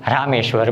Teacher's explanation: આમ રામ અને ઈશ્વર આ બંને શબ્દ જ્યારે જોડાય છે ત્યારે એનું ઉચ્ચારણ એ બને છે. એટલે કે અ અને દીર્ઘ ઈ આ બંને જ્યારે એકબીજાની સાથે સંયુક્ત થાય છે, બંને એકબીજાની સાથે ભળે છે ત્યારે એનો ઉચ્ચાર એ બને છે. માટે રામ અને ઈશ્વર શબ્દ જોડાતા રામેશ્વર બને.